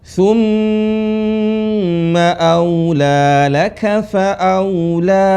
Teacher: Mim bertasdid, nun bertasdid, tahan. 2 harokat.